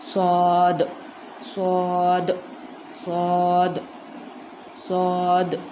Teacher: सौद में ज़ुबान का किनारा और सनाए सुफला का ऊपरी हिस्सा